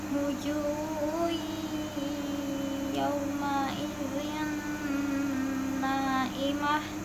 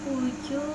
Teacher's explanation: Wujuh ju mat tobi'i karena ada wawu sukun sebelumnya domah dibacanya 2 harokat.